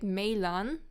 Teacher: they melt the 2 a's into one, so we get melan, the 1 a disappears